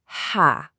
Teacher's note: We start with our deep, breathy ha, and it has a fatha on top, so that sound is ha.